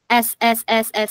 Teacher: Ujung lidah tuh ketemu sama gusi gigi depan yang bawah.